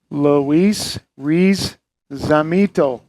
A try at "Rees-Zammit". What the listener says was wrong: There's no Z. There's no O.